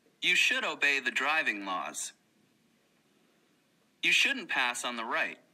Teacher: notice the vowel sound of uh in should and must when they are pronounced quickly